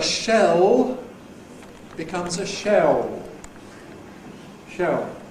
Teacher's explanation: You get rounding usually added. And so a shell becomes a shell. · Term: a new diphthong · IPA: [ ʃeo ], [ ʃeɫ ]